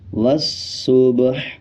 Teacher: آخر میں ح کو آدھا پڑھا جائے گا اور ح کا زیر سائلنٹ ہو جائے گا۔